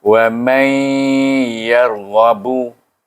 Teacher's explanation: nun sukun bertemu dengan ya, dia kena baca dengan idgham ma'al gunnah, iaitu dengan gunnah